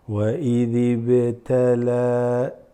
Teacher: So وَإِذِ, what happens from this this drops here, mixing with the ba, and the ba is qalqala, it slightly shakes, right, doubles